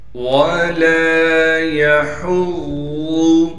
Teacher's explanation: وَلَا يَحُضُّ، واو کو بغیر کھینچے پڑھنا ہے، لام کے بعد الف مدہ ہونے کی وجہ سے لام کو ایک الف کی مقدار کھینچیں گے، یا کو بغیر کھینچے پڑھیں گے، ہا کو صاف کر کے گلے سے نکالیں گے · ضاد پر تشدید ہونے کی وجہ سے تھوڑا ٹھہراؤ کریں گے، اور ضاد کو موٹا کر کے پڑھیں گے، اس لیے کہ ضاد موٹے حروف میں سے ہے، اور ضاد کو بالکل بھی نہیں کھینچنا ہے۔